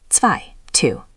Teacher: Always listen for that ts at the start of zwei. That ts is the giveaway.